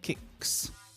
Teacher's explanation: the word kick finishes with a k, which is a voiceless sound. And so we pronounce the s as s.